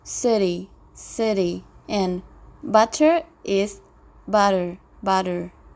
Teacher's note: Fifth, intervocalic T is tapped.